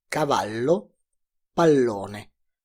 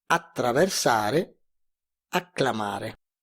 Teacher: Las consonantes doble, cuyo sonido se puede mantener por más tiempo, suponen una pronunciación más larga, mientras se debe acortar la vocal que precede la consonante doble.